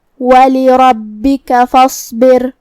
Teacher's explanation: صاد حروف التفخیم میں سے ہے تو ہمیں یہ حرف کو موٹی آواز میں پڑھنا ہے، اور جو کہ اس پہ جزم ہے تو ہم حرف الصاد کو ظاہر کریں گے۔ · کلمت فاصبر میں یہاں حمزہ وصل ہے تو ہم حمزہ کو ظاہر نہیں کریں گے، فا کے بعد حرف الصاد پڑھیں گے۔